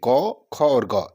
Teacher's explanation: क, ख और ग इन तीनों का उच्चारण तो कंठ है